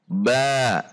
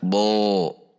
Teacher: pangkal lidah turun atau rileks sehingga suara huruf menjadi tipis. Ba tidak dibaca bo atau lidahnya kita naikkan bo. · Ba tidak dibaca bo atau lidahnya kita naikkan bo. itu adalah lidahnya naik. Sementara huruf ba dibaca dengan posisi lidah yang rileks atau turun. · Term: istifal